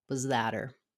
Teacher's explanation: So we drop the H, the was and that linked together, and the final T of that was that her, because we don't have an H or consonant sound on her, it can become a flap.